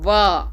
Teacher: आप वा बोल रहे हैं तो आपका दांत नीचे वाले ओठ से टकरा रहा है।